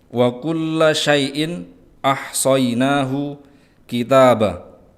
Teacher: lam bertasydid ditahan sejenak untuk tasydid. Syai'in ada mat layyin atau harful layyin, ya sukun yang diikuti oleh fathah maka dibaca lembut.